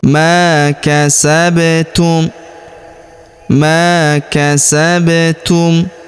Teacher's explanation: Huruf ba berharakat sukun. Kita berikan pantulan atau qalqalah.